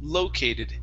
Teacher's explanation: the word located stressed at the beginning as well